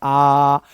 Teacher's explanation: विवृत्त स्वर में मुंह पूरा खुल रहा है। जितना मैक्सिमम खुल सकता है, आप इसको ऐसे बोल सकते हो आ ऐसे नहीं इसको बोलना है।